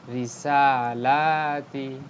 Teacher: >> যেমন দেখেন রিসালাতি। ঋ ঋ কিন্তু দ্রুত তি দ্রুত। কিন্তু সালা সালা এক আলিফ টান